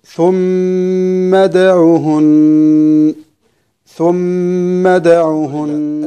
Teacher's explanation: نخرج من الميم المشددة على الدال، همزة الوصل سقطت وصلا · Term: همزة الوصل تسقط وصلا